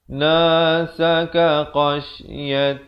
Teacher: lafzu jalalah di sini dibacakan nipis 2 harakat